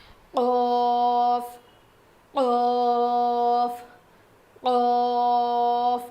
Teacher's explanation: زبان کی جڑ اور اوپر کے تالو سے قوف ادا ہوتا ہے. تو جو ہماری چھوٹی زبان ہے نا, جو تالو ہے نا, وہ تھوڑا سا اوپر اٹھے گا جب ہم یہ پڑھیں گے